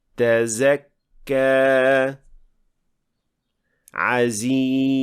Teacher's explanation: Zay is a voiced sound, which means that in producing this sound, we vibrate the vocal cords